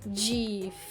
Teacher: Difícil é uma palavra de 3 sílabas. Difícil. Fi é mais forte. Se eu leio essa palavra e eu vejo que ela está acentuada, não me resta dúvida de que a pronúncia dessa palavra é difícil e não difícil ou difícil. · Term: sílaba tônica